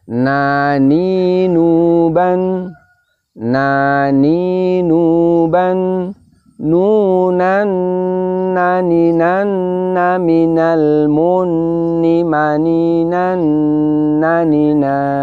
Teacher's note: Perhatikan pada saat sukun dan tasdid, di situ kita bisa merasakan begitu disukun suara berhenti, kita bisa merasakan bahwa nun itu makhrajnya di ujung lidah menempel pada gusi kita, kemudian suaranya kemudian keluar dari pangkal hidung kita.